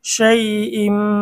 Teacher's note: তানবিনের পরে ইকলাবের হরফ বা এসেছে, মিম দ্বারা পরিবর্তন করে গুন্না সহ পড়তে হবে। শাই ইম, এখানে ছোট্ট একটি মিম দেওয়া আছে।